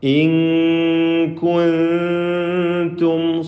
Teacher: സാക്കിന മീമിനെ ഇൽഹാർ ഷഫവി നൽകി മണിക്കാതെ വെളിവാക്കുക.